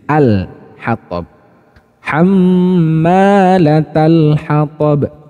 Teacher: sedangkan pada hukum tajwid izhar qamariyah yang dibaca jelas adalah lam sukunnya, ya, dibaca jelas lam sukunnya.